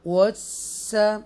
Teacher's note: आपके होंठ गोल होने चाहिए, राउंड होने चाहिए, और ये सीन मुशद्दा है